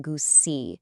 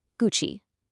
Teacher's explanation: The G is hard, so it's gu, and the CI part sounds like chi.